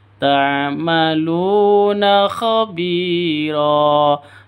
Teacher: Ta'maluna, lu panjang dua ketukan, ada waw mati diawali dengan dhammah, bacaan mad asli.